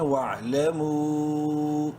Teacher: واو عین زبر وا، الف سائلنٹ، لام زبر لا، وعلم میم واو مد پیش مو، 3 الف کے برابر لمبا کر سکتے ہیں. وعلموا، الف سائلنٹ.